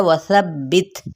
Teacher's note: वाव होंठों की ना तमाम गुलाई के साथ, सब्बित, अब सा की ज़बर को बा के साथ दबा करते हुए दबाव के साथ अदा करना है, बित, ये।